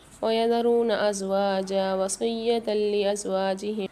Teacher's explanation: وصیۃ میں تا پر جو دو زبر ہیں یہاں قاعدہ ہوگا ادغام بلا غنہ کا، یعنی یہاں پر ہم غنہ نہیں کریں گے۔